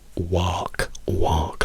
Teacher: In americano direbbero work, work, work, e per walk loro direbbero walk, walk. Loro hanno una O aperta, lunga, che noi non abbiamo.